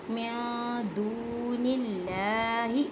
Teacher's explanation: نون ساکن کی آواز کو چھپانا ہے ایک الف کی مقدار میں